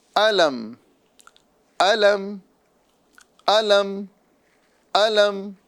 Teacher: یہاں پر میم ساکن ہے، اس میں گنہ نہیں کریں گے، اس کا اظہار کریں گے